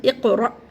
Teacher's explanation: कफ को मोटा करना है · ساکن حمزہ کو جھٹکے سے پڑھنا ہے